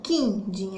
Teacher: é como se o Q aí tivesse o som do K, o I ele fosse fechadinho